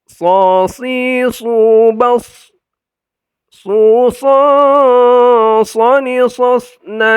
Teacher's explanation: tempat keluarnya ujung lidah ke gusi ditempelkan ke gusi bagian bawah